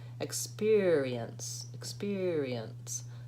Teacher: So that E syllable is really like a tiny schwa in there.